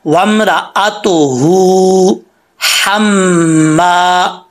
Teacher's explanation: पहली हा मोटी, दूसरी हा बरीक